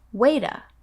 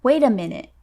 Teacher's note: the T sound in wait is pronounced as a D sound when you link the words wait with a.